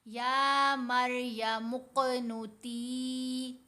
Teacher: یا مریم اقنتی، تا کے نیچے زیر، ساتھ یا ساکن، تو یہ یا مدہ ہے. اب ہم نے تا کی آواز کو 2 حرکات کی مقدار لمبا کیا